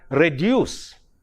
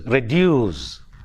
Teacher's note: re is a prefix, so that is not stressed. The stress falls on reduce